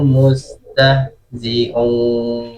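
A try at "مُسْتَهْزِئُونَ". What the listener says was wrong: Setelah zi kemudian seperti terdengar huruf ain ya. Coba diganti huruf a biasa, huruf hamzah. Mustahzi'un gitu ya.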